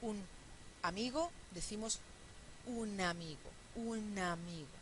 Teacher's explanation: en realidad la primera sílaba es u y la segunda sílaba es na, un amigo. Entonces tenemos 4 sílabas, pero fíjense cuántas son abiertas.